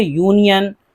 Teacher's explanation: ان سب کے شروع میں کہیں بھی الف یعنی واول کی آواز نہیں ہے، یا کی آواز ہے